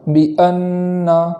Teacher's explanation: بِأَنَّ کے حمزہ میں خوب جھٹکا کریں گے، اور اس کے بعد جو نون مشدد ہے یعنی تشدید والا جو نون ہے، تو تشدید ہونے کی وجہ سے وہاں ایک الف کے برابر گنہ کی تاخیر کریں گے